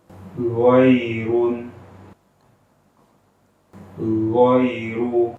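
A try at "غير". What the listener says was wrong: Itu ada e-nya, ada e-nya. Ghairu, yang benar gho. Gho. Ghairu.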